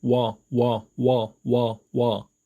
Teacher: 자, 첫 번째 단모음 우, 두 번째 단모음 어. 자, 첫 번째 우의 입모양에서 어의 입모양으로 발음을 빠르게 연결해서 하시면 됩니다. 우, 어, 우, 어, 우, 어, 우, 어, 우어, 우어, 우어, 우어, 워, 워, 워, 워, 워. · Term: 이중모음